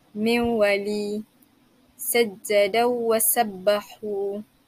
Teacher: tetap dilihat sebagai idgham ma'al kunnah, tapi dibaca secara bila kunnah, secara tidak dengung